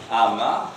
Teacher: the soft palate is lowered, so that the air is released through the nose. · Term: nasal